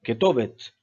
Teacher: se prononce comme un E escamoté, un peu comme maintenant, pas aussi long que le tséré ou le ségol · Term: shvana